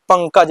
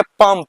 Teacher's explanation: मतलब यहाँ अनुस्वार का उच्चारण न के उच्चारण हुआ या अनुस्वार उच्चारण म के उच्चारण हुआ, इसलिए कहीं कहीं अनुस्वार को न भी बोला जाता है, कहीं कहीं इसको म के उच्चारण में भी पढ़ा जाता है